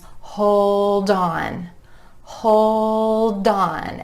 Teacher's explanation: that final D in hold, jumping over in front of the word on, making it sound like dawn.